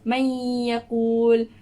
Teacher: May yaqul. Dia tak sebut sangat dia huruf nun. Pada huruf nun tu kita tak baca, macam tak dengar sangat huruf nun tu. Tapi dia terus masuk ke huruf ya. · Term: idgham ma'al ghunnah